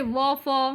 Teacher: निचले होठ और ऊपरी दांत से